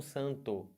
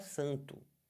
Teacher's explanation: no sul, por exemplo, eles falam santo, eles respeitam esse O no final.